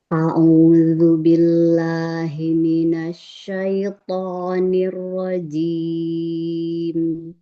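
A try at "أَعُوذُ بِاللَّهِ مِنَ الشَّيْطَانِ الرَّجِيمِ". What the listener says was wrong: Asyaiton. Lebih tambahkan lagi itbak pada toknya. Linnya selesaikan. Asyaiton.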